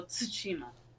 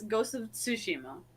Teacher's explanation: There is a T there at the beginning of the word, which means in Japanese you pronounce that, but it's followed by an S sound. So you kind of got to do that thing where it's like the you kind of got to have to like force it out of yourself, right?